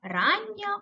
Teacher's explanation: в слові рання подовжений звук н